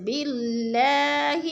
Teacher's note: اللہ سے پہلے لفظ با کے نیچے زیر ہے تو اللہ باریک پڑھا جائے گا